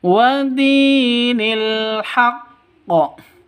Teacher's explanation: Wadini, di panjang dua ketukan karena ada ya mati diawali dengan kasroh atau ya mati sebelumnya berharokat kasroh, mad asli atau mad tabi'i, panjang dua ketukan.